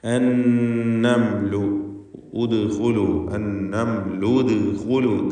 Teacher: ദാലിന് സുക്കൂൻ, ഖൽഖല സുഗ്റ. അവിടെ ദാലിൻ്റെ സുക്കൂനിൻ്റെ ശബ്ദം ചലിപ്പിച്ചുച്ചരിക്കുക.